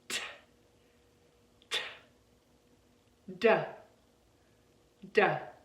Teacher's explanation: We create these two sounds by putting our tongue on the back of our alveolar ridge, which is right above the teeth, right back there, okay?